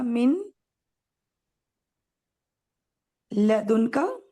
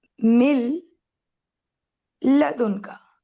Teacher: یعنی ایکچوئل میں تھا من لدن کا، اور جب میں نے نون کے بعد لام آیا تو نون کو لام بنا دیا، تو یہ ہو گیا مل لدن کا. · ٹھیک، تو اصل میں نا یہ سین تھا، من تھا اور لدن کا تھا، لام کے اوپر صرف زبر تھا. لیکن چونکہ نون کے بعد جب لام آئے گا تو مرجنگ ہوگی، نون کو لام ہی بنانا ہے، تو اب ہو جاتے ہیں دو لام